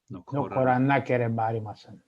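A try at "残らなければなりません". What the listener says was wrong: Narimasen with an N. Narimasen.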